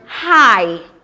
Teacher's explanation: starts with the mid open midback vowel a and Glides to the closed front vowel e